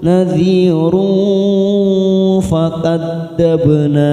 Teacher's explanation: Nadhiru duma tanwin pada huruf ra bertemu dengan fa, namanya ikhfa ausat, kita semarkan 3 ketuk